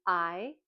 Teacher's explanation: We know that when we make the sound I, Our mouth is open and smiling. Our tongue is towards the front of our mouth, and we know that it's a voice sound. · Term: long sound I